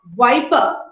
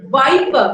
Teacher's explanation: in general indian english we did not find much difference between these two sounds indian speakers you know substitute one for the other